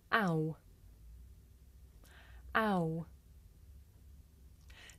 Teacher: this is a diphthong a double vowel sound the shape the mouth makes changes from the beginning of the sound to the end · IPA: /aʊ/